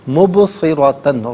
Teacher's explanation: ناظرین مبصرۃً میں با ساکن ہے، لیکن چونکہ با حرف قلقلہ ہے تو یہاں آواز لوٹتی ہوئی محسوس ہونی چاہیے